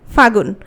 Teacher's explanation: তাহলে ফাল্গুন থেকে যখন ফাগুন হচ্ছে, কোন জিনিসটা লোপ পাচ্ছে? লটা লোপ পাচ্ছে। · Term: অন্তর্হতি